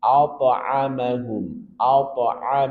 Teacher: karena ini di tengah kata, maka qalqalahnya sugro, tidak terlalu nampak.